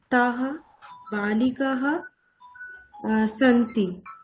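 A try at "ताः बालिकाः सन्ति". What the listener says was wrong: Good. তাহা বালিকাহ সন্তি।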